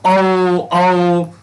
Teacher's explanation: उ ओठ से और आ ये कंठ से, तो कंठोस्थ से बोले जाते हैं